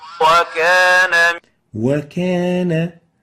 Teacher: So in wow you should say oo, purse your lips. But the problem arises, especially when you have a fatha, you might tend to decrease that pursing. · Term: pursing of the lips